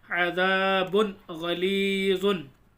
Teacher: तनवीन की आवाज़ को ज़ाहिर करके पढ़ेंगे क्योंकि हरूफ हल्की के 6 हरूफों में से गैन आ रहा है